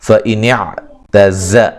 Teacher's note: زا کو سیٹی سے ادا کریں گے